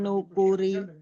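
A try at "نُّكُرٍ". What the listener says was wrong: Jangan sampai dia terlalu jelas, Bun. nukuri. Nukuri.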